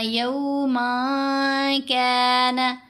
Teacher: من میں جو نون ہے اس کو ناک میں چھپا لینا ہے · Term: اخفا